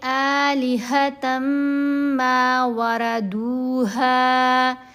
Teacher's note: آلہتن میں جو نون کی آواز ہے وہ سائلنٹ ہو جائے گی، تا کو میم سے ملایا جائے گا، پھر میم مشدد کے اوپر غنہ بھی کیا جاتا ہے۔ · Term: ادغام